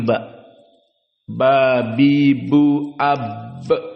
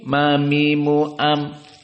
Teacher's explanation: lebih kuat tekanannya ba bi bu AB sampai ada Qalqalah namun mim meskipun intibak namun lebih lemah jadi Ma mi mu am tidak ada Qalqalah